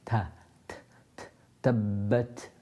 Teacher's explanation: the Ta is pronounced when the tip of the tongue is just above the gums of the central incisors